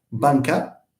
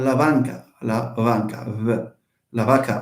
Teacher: Spiritization is the process whereby, a voiced, no, a stop becomes a fricative. We have the famous example from Spanish where you have b, banca, okay, but you have la banca, v, la vaca also for the cow.